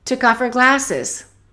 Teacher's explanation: Let's connect took off. And let's eliminate the H of her